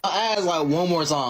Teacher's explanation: you flattened the diphthong in the word time, pronouncing it as Tom.